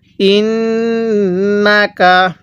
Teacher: নুনের মধ্যে গুন্নাহ করব টান দিব না